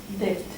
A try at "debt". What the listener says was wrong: That, no, that was silent. No, debt. Debt. Debt. Forget the B. It's just debt. It's irregular. It's lost its force, the B.